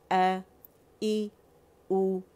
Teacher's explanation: ये हमज़ा की आवाज़ हमने हमज़ा की जगह से ही निकालनी है, फार थ्रोट से निकालनी है, अक्सा अल हलक से हमने निकालनी है। हमने आ ई ऊ नहीं करना, अल जॉब से नहीं निकालनी।